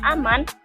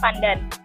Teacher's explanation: perubahan bunyi N apikoalveolar pada kata aman menjadi apikopalatal pada kata pandan